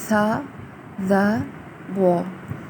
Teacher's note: اس کے بعد دوسرے نمبر پہ ہم دیکھتے ہیں ث، ظ، و۔ یہ تینوں حروف زبان کے اگلے کونے کو اگلے اوپر کے دانتوں کے سرے سے لگانے سے ادا ہوتے ہیں